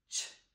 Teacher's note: So we know that ch is an unvoiced sound. And when we make the ch sound, our tongue is behind our top teeth.